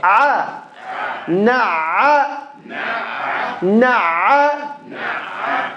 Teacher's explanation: Middle of the throat. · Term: عين